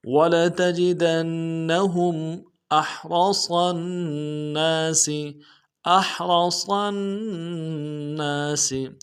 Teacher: ہوگا۔ ولتجدنہم احرص الناس حمزہ کو ہا کے ساتھ ملانا ہے، ہا کو گہرائی سے ادا کریں گے، را کو موٹا کریں گے ، صاد کو موٹا کرتے ہوئے آگے نون کے ساتھ ملانا